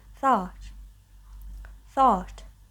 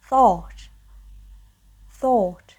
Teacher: It's more open in American English, and in British English, it's like whole. Like really, your mouth is like closed.